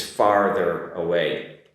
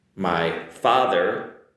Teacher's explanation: farther is not the same as father, like mother, father. The pronunciation is different there as well because I have an R in there.